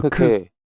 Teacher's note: It's very breathy, 服、 and in this instance, it sounds like hu. We're saying hu with a soft f at the start of that hu.